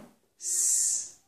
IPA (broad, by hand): s